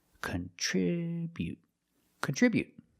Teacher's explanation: put the stress on the second syllable